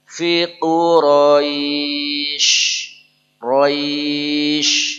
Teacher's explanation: huruf belakang syin jadi suara dia lebih menyebar